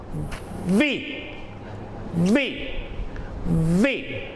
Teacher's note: जब आपके अपर टीथ आपके लोअर लिप पे नेचुरली फॉल करेंगे तो ये वॉइस आएगी, अदरवाइज ये करेक्ट वॉइस आ ही नहीं सकती।